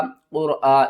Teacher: را کو بھی موٹا پڑھیں گے اور قاف کو بھی موٹا پڑھیں گے۔ قاف را پیش قر، حمزہ کھڑا زبر آ، قرآ۔